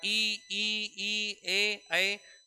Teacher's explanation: ई ए इनमें होठ का आकार फैला है।